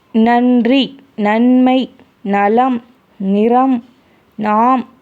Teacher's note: நா சொல்லும்போது மேல்வாய் பல்லு இருக்கு இல்லையா அந்த பல்லுக்கு பக்கமா வந்து தொடும் நன்னு சொல்லும்போது பல்லோட அடி பல்லு மோதுற மாதிரியே தொடும்